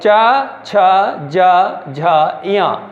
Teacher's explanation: इसको हम तालु की सहायता से बोलते हैं। जो हमारी जिह्वा है वो हमारे तालु में लगती है, तालु में लगा करके हमें इनको बोलना पड़ता है।